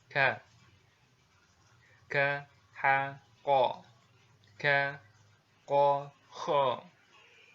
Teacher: huruf K ini diucapkan ya dengan mengangkat pangkal lidah kita ke posisi di depan huruf Qaf ya. Diucapkan dengan mengalirkan nafas kita ya. Perhatikan, kalau huruf K biasa itu kan aliran nafasnya nggak keluar ya, tapi kalau huruf Kaf yang bunyinya K ini dia ada sedikit aliran nafas gitu yang keluar.